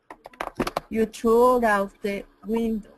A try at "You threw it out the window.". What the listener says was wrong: Get that TH though. Through, through.